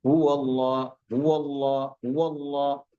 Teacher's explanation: यहां पे हा की आवाज नहीं आनी चाहिए। हा उसकी आवाज नहीं आनी चाहिए। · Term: हमजा